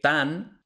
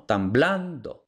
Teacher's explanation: por influencia de la B que sigue vemos Por cierto que tan no tiene ningún acento no el acento no llega hasta blando